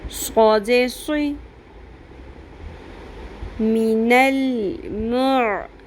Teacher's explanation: صاد کے ساتھ زیر بھی آ جائے تب بھی صاد پر ہی رہتا ہے. حروف مستعلیہ جو ہیں پر حروف، ان کے نیچے اگر زیر بھی آ جائے تو وہ پر ہی رہتے ہیں.